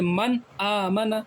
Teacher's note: حلقی آ گیا تو وہاں پہ غنہ نہیں ہوگا، اس کے علاوہ کوئی بھی حرف آ جائے وہاں پہ ہم غنہ کریں گے۔